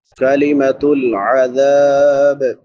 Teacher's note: काफ बारीक है, मीम के ऊपर ज़बर है, ज़बर ज़ेर पेश लंबी नहीं होती।